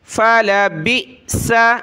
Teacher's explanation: جہنم خالدین فیہا فلبئس، فا زبر فا لام زبر لا فلا، با کو حمزہ ساکنہ کے ساتھ ملائیں گے، جھٹکا دیں گے